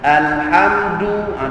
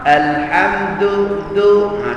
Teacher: Dal Melayu lidah jauh pada gigi maka akhirnya dengar keras sikit